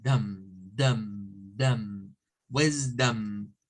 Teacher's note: D, O, and M. And for the O, we have to use the schwa.